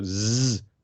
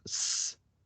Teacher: So Z, your voice box vibrates, and the S, it doesn't. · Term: voiced